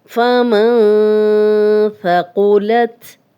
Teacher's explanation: تھا نرم حروف میں سے ہے، سیٹی کی آواز نہیں آئے گی